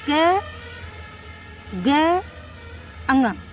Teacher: इसको बोलने में हमारी वायु कम लगती है। कम वायु बाहर निकलती है। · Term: अल्पप्राण